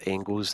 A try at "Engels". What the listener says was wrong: the G's silent, by the way. Engels, according to Derek Ray, who we know is very good with these pronunciations.